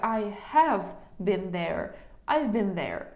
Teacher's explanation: Been була, а have я не виділяю.